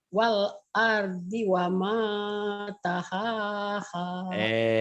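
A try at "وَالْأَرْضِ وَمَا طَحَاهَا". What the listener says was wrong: To, Bu, itu huruf Jawa. To, bukan tahaha.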